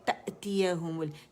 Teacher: پھر تأتیہم، تا جو ہے یہ زبر ہے اس کے، لیکن یہاں پہ حمزہ ساکن ہے تو جھٹکے سے پڑھا جائے گا